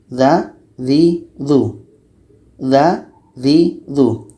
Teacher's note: Dza juga sama-sama letaknya pada ujung lidah menempel dengan ujung gigi seri atas.